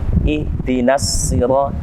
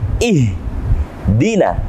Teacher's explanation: Maka huruf H di sini dia harus getarannya pada adnal halqu atau kerongkongan yang paling bawah.